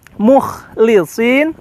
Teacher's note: huruf kha yang kalau kita lafalkan secara makhraj ini memiliki kesan lebih kasar daripada huruf gha ya